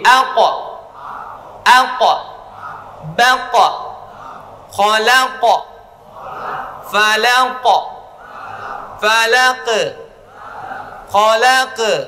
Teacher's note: Qalqalah qaf saat sukun berbunyi o, bukan aq, tetapi aqo.